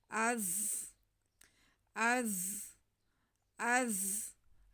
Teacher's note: زا ساکن ہے، زا سیٹی کی آواز کے ساتھ پڑھا جائے گا۔